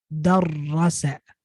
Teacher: the only difference is that the first syllable ends with an R. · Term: Shadda